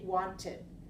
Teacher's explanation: at the end so example want this one add Ed T we cannot have two t sounds together so we add another syllable and we say wanted